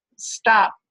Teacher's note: Or if I say that last sound and make that release part of the stop inaudible, then we could transcribe it as stop.